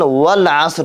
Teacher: Эгерде вау кошулуп окулсанда хамза басыл окулбастан wal asr деп окулат. Ачыктап айтканда хамза басыл кошулуп окулганда түшүп калат.